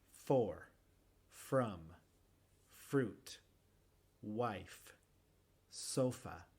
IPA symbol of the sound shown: f